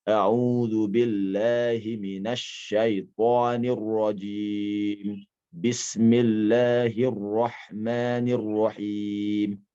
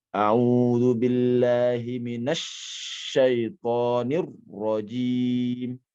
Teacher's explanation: tekanan yang berlebihan pada huruf-huruf yang bertasydid